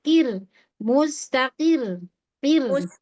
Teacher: Lebih mundur lagi lidahnya. Untuk ro sukunnya ini ro sukunnya di diawali dengan kasrah itu perlu perhatian ee tipisnya ya.